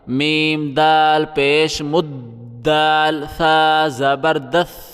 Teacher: میم کو ہم دال کے ساتھ ملائیں گے اور دال کو سا کے ساتھ ملائیں گے سختی کر کے۔ سا پہ زبان باہر نکالنی ہے